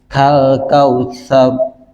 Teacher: ro itu ketika sebelumnya ada harakat Fatah itu rnya dibaca tafkhim Jadi rada monyong sedikit